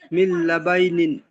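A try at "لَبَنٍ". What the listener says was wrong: মিল্লা বাইনিন নয়, মিল্লা বানিন। বাই হলে তাহলে বার উপর তাসদিদ থাকতো। মিল্লা বানিন।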